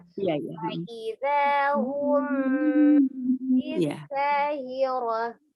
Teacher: itu ada mim sukun ketemu dengan baknya ya. Dia dibacanya dia dibacanya ikhfa safawi samar.